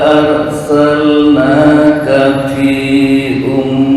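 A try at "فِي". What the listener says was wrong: Panjang. Fi. Arsalnaka fi.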